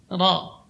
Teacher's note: huruf ra ketika bertasydid maka getarannya berkurang, kemudian ketebalannya bertambah